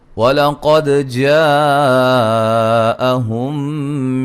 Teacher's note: قاف کو موٹا، دال پہ قلقلہ، جیم پہ مد واجب ہے